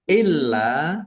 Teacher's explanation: lamnya dibaca dobel ada tasdidnya ditekan biar tampak dobelnya